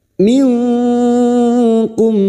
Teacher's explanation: mendengung selama tiga harakat lum nun sukun bertemu Kaf ikhfa Hakiki kita semarkan bunyi nun sukun dan mendengung selama tiga harakat